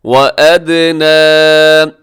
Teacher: یہاں دال ہوگا قلقلہ، دال ساکن ہے، قلقلہ کیجیے